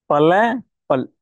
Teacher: ல பல் அதாவது மேல்வாய் பல்லின் அடியை நாவின் ஓரம் தடித்து பொருந்தும் சரிங்களா ல அதாவது மேல்வாய் பல்லினுடைய அண்ணத்தை கரெக்டா அந்த மேல்வாய் பல்ல லைட்டா · நுனியானது கண்டிப்பாக என்ன பண்ணும் மேல்வாய் பல்லினுடைய நுனியை தொற்றுருக்கணும் சரிங்களா ஓகே அடுத்தது மேல்வாய் முன்பல்லின் உட்பகுதியை நுனினா லேசாக பொருந்தும்